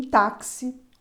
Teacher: E em táxi, o X tem som de KS. No caso de táxi, a letra X representa 2 fonemas, o K e o S.